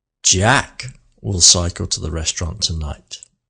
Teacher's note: the rest of the sentence, we'll cycle to the restaurant tonight, is all spoken very quickly. But Jack was very slow and meaningful. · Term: emphasis